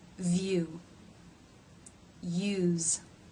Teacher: the sides of the top of the tongue are pressing the sides of the roof of the mouth leaving a small passageway down the center · pressing all the way to the roof of the mouth because the center part of the tongue is actually leaving room for air to pass through so the sides of the top of the tongue are pressing · the tongue has to make this movement from being forward and raised to being back and raised in this diphthong.